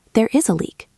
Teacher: My voice goes down at the end.